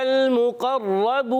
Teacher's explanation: مقربون میں میم پر پیش ہے, قاف پر زبر ہے, را پر بھی زبر ہے, یہ بھی نہیں کھینچے جائیں گے. مگر را پر زبر ہے اور تشدید بھی ہے, ذرا رک کر پڑھیں گے, اور را کو موٹا بھی پڑھیں گے. جی ہاں, جس را پر زبر اور پیش آ جائے اس را کو ہمیشہ موٹا کرتے ہیں.